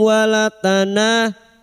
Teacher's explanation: na fathah diikuti alif 2 harakat mad tabi'i